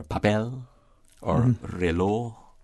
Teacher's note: they're emphasized on the last syllable